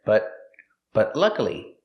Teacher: The T in but is a stop T. Stop the air, but luckily, and link it to the next word.